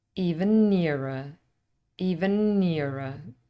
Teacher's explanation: we don't put a pause in between the two consonants germination really means that the cons becomes slightly longer so what